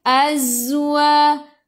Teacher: Sifat hurufnya safir. Kena bunyikan z.